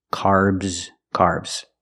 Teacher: the a r makes the r sound like car and far the S makes a z sound like zebra make the vibration